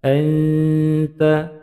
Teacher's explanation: Anta mendengung samar menuju pada huruf ta. Bacaan ikhfa dipanjangkan dua ketukan.